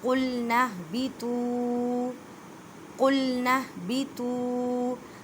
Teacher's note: تو کو ادا کرتے وقت خیال رکھیں کہ تا کی آواز نہ آئے، کیونکہ یہ حروف مستعلیہ یعنی موٹے حروف میں ہے